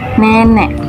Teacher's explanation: Ciri-cirinya berdasarkan posisi lidah bawah, berdasarkan gerak lidah depan, berdasarkan gerak bibir tak bulat, yaitu vokal diucapkan dengan bentuk bibir tidak bulat atau terbentang, dan struktur semi terbuka, yaitu vokal yang dibentuk dengan lidah diangkat dalam ketinggian seperti ruang mulut.